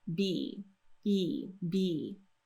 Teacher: Now, when we go to B, we're doing a tense E sound there, so the tongue is pushing up firmly on the roof of the mouth and sliding forward just a little bit · Make sure that your lips fully close for that B sound, that you get a nice strong pop there.